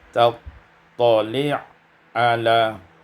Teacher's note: idghamul ain fil ain, diidghamkan ain pada ain maka menjadi tali' ala